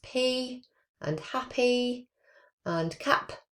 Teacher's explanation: the bilabials are made with the two lips coming together · the air gets stopped at the bilabial position at the two lips because our lips are closed and then it's the release of our lips that makes those sounds. So it's the plion coming out the air is released and it makes those sounds. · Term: voiceless bilabial possive